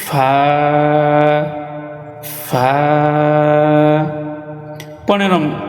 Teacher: নিচের ঠোঁটের পেট সামনের উপরের দুই দাঁতের আগার সঙ্গে লাগাইয়া একটি হরফ উচ্চারিত হয়